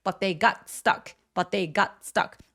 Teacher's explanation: t와 th의 혀의 위치가 매우 가깝습니다. 그래서 거의 한 번만 발음하게